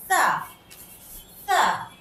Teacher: তোমরা সবাই জানো সা উচ্চারণ করতে হয় সামনের দাঁতের, উপরের দাঁতের সামনের যে 2 দাঁত আছে সেই 2 দাঁতের আগার সাথে জিহ্বার আগাটা লাগিয়ে পড়তে হয় সা।